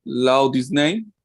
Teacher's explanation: There is a deletion of the sound of the T here and a deletion of the H. Or you can just delete one, which is easier, I think. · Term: double deletion